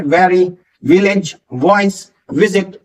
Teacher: जो वी वाले होते हैं जिसमें ऊपर के दांत नीचे के होठों से आपके टच करते हैं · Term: वी साउंड